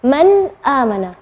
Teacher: nun sukun ketemu dengan hamzah, maka bacanya nunnya yang jelas. Man amana, bukan man amana, bukan.